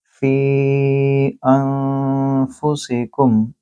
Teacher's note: اب فی بذات خود ایک لفظ ہے، انفسکم دوسرا لفظ ہے، اور فی کے اوپر آپ مد دیکھ رہے ہیں، اور یہ جو حمزہ ہے یہ حمزہ جو نون کے ساتھ مل رہا ہے، یہاں نون اخفا ہے کیونکہ نون کے بعد ہے فا، تو آپ نے یہاں غنہ بھی کرنا ہے اور فی کو 3 سے 4 سیکنڈ کے لمبا کریں گے۔ انفسکم میں حمزہ ہے لہٰذا یہ ہے مد منفصل، اس کو بولیں گے فی انفسکم، اس پہ آپ نے غنہ بھی کرنا ہے۔